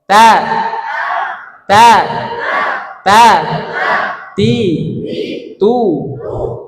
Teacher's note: ujung lidah menempel pada pangkal gigi seri atau tempat tumbuhnya dua gigi seri atas pian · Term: huruf tada